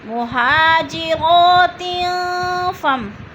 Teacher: جاءکم المؤمنات مہاجرات فامتحنوہن، مہاجرات، 2 زیر تنوین، آگے فا، حروف اقفا میں سے آگے ہے تو ادھر اقفا ہو رہا ہے، آواز کو ناک میں چھپا کر پڑھیں گے